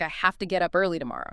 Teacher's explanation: Have to frequently becomes hafta